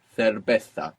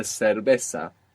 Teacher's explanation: if you have a particular affiliation for Spain, you can make this th. If not, I suggest using the s sound, because the majority of Spanish speakers are using this sound, and it's also much easier.